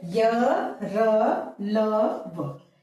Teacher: य, र, ल, व बोलते समय घोष होता है। घोष उत्पन्न होता है। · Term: घोष वर्ण